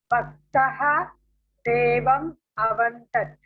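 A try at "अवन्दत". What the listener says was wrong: No. Now it is completely wrong because now it doesn't have a halant. So now you have to say avandata.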